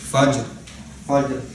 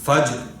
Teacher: اب فجر میں بھی جیم ساکن ہے, اس پہ زبر کی آواز نہیں آئے گی لیکن کلکلہ ہوگا. ٹھیک ہے, تو فجر پڑھیں گے تو زبر ہو جائے گی, اور فجر پڑھیں گے تو کلکلہ ساؤنڈ نہیں کرے گا, تو درمیان آ, یعنی کلکلہ ساؤنڈ کرے, زبر ساؤنڈ کرے.